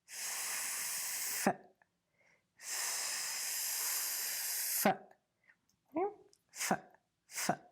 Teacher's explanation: With F, the sound is unvoiced. So you don't use your vocal cords to make the sound. You push the air, and at the last minute, lift your teeth and let the air come out.